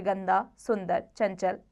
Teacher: जिस स्वर के उच्चारण में हवा केवल नासिका से निकले व उच्चारण अधिक जोर से हो उस पर केवल बिंदु लगाया जाता है, ऐसे स्वर अनुस्वार कहलाते हैं, जैसे गंदा, सुंदर, चंचल आदि।